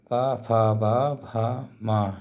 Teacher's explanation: पा वर्ग: पा, फा, बा, भा, मा, ये ओठों का स्पर्श करते हैं